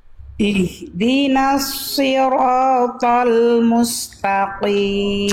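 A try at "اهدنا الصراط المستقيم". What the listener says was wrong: kena di huruf shad. Bunda coba lafalkan si. Nah, jadi pangkal lidahnya diangkat lagi karena huruf shad itu termasuk ke dalam huruf yang tebal, maka cara menebalkan huruf tebal itu dengan sifat namanya isti'la. Isti'la itu mengangkat bagian pangkal lidah kita ke arah langit-langit.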